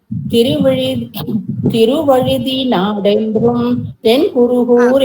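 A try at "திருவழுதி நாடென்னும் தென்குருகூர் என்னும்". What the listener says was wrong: என்றும் இருக்கறத என்னும் அப்படி வாசிங்குமா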